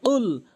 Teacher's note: কফটা হচ্ছে জিহ্বার গোড়া উপরের তালুর সঙ্গে